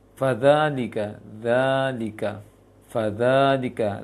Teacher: zalnya panjang dan itu panjang 2 harokat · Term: mat 2 harokat